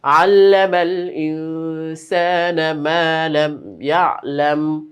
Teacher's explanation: আল্লাযী আল্লামা বিল কলম, আল্লাযী আল্লামা বিল কলম, আল্লামাল ইনসানা, আল্লামাল ইনসানা মা লাম ইয়ালাম। তো এখানে মিমের পরে ইয়া, ইজহারে শাফাওয়ি বা মিম সাকিনের ইজহার, কোনো গুন্নাহ কিন্তু হবে না।